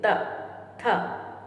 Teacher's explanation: जो हमारी टंग होती है वो कहीं ना कहीं हमारे दंत को टच कर रही होती है।